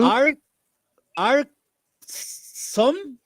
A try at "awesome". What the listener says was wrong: Awesome. Awesome, American English and British English, no R sound. Awesome.